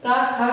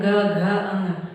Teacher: घोष मतलब जिन व्यंजनों का उच्चारण करने में हमारी स्वर तंत्रियाँ झंकृत हों उसी को घोष कहा जाता है। और जिन व्यंजनों का उच्चारण करने में हमारी स्वर तंत्रियाँ झंकृत ना हो वही अघोष है · तो का खा का उच्चारण करने में नहीं हो झंकृत हो रही, लेकिन जैसे ही ग के जा रहे हैं, ग घ अंग, तो स्वर तंत्रियाँ जो है झंकृत हो रही हैं, इसीलिए उसको सघोष कहा जाता है